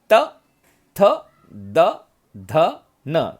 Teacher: तो उसका उच्चारण बिना जीभ जो है दांत को लगाए नहीं होता, दांत को लगाना पड़ता है। त, थ, द, ध, न, दांत को हमारी जीभ टच होती है, तो ये त वर्ण है। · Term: दंत्य